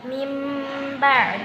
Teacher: Apabila ada nun sukun atau tanwin bertemu dengan huruf ba maka cara membacanya dengan membalik nun sukun dengan Mim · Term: iqlab